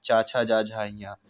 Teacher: चा वर्ग में तालु का स्पर्श होता है